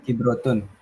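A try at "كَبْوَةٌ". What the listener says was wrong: Emang ada roknya? Kabuah. Kabuah. Likulli jawadin kabuwatun.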